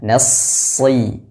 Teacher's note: ditebalkan kemudian dialirkan nafasnya dialirkan suaranya dan dijelaskan suara desisnya atau sifat safirnya Nas kemudian sambil menyempurnakan harakat kasrah atau vokal i-nya kemudian huruf